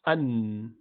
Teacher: Half of that comes from the nostrils, so you cannot block the nose to say an. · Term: Noon